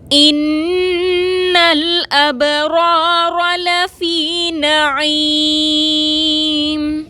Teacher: اب رو میں با ساکن پر کلکلا کریں گے، رو پر زبر ہے، رو کو موٹا پڑھیں گے. لفی میں یا ساکن سے پہلے فا کے نیچے زیر ہے، یا مدہ ہے، 2 حرکت کے برابر کھینچ کر پڑھیں گے.